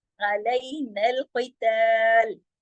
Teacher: क़ाफ मोटा, बाकी तमाम हुरूफ बारीक